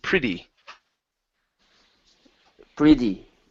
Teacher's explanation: you can pronounce the T's as a normal T, or you can pronounce them as a flap T